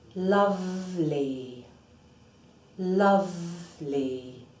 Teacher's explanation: This is a fricative that is voiced, so you need to feel vibration as you place the sound. Teeth on, wet part of bottom lip.